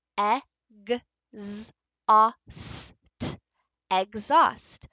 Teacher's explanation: When we have a multisyllable word here that has an E to an unvoiced H, we actually lose the H sound